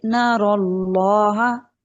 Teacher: जी, नरल्लाह नहीं करेंगे, नारा नहीं बनाएंगे, नरल्लाह। नरल्लाह रा को मोटा रखेंगे, नून को मोटा नहीं होने देंगे। जिस भी हर्फ को हमने मोटा करना है उससे पहले या उसके बाद वाले हर्फ को हमने कॉन्शियसली बारीक रखना है।